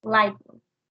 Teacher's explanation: in the word light blue, the T is changed to P